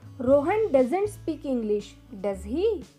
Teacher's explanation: When we are sure of the answer and just want a response from another person, that time we use falling intonation. That time our voice goes down.